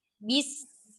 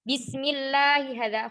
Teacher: Maka kita tidak boleh memanjangkan huruf ba-nya. Langsung ke huruf sin yang mana dia memiliki sifat rokhwah. Suara dialirkan.